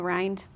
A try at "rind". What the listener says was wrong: When you say rind, please roll the R. Rind. Rind.